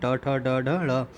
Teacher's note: ट से लेके ड़ तक के जितने वर्ण आते हैं ट ठ ड ढ ड़, ये सभी आपकी क्या होंगे? मूर्धा से उच्चारित होंगे।